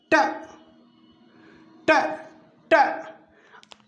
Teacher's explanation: ट का उच्चारण करते हैं तो जीभ ऊपरी यानी कठोर तालू से लगती है जाकर। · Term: मूर्धन्य